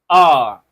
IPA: aː